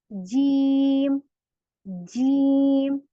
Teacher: मेरा जो ये जबान का बीच है ऊपर तालू को चिपक रहा है बिल्कुल ऐसे जीम तो मेरी सही अदायगी है ठीक है अगर